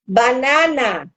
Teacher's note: banana em espanhol ele não tem esse som nasal que a gente tem aqui no português Banana pelo menos aqui a gente não tem nenhum som nasal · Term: som aberto